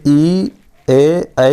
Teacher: तो अग्र स्वर हमारा जब भी उच्चारण करेंगे ई, ए का, तो हम लोग जीभ का आगे वाला भाग से उच्चारण करेंगे